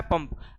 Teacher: ठीक है, तो इनको नासिक की ध्वनि भी कहा जाता है क्योंकि इनके उच्चारण में हवा जो रहती है मुख से कम और नाक से अधिक निकलती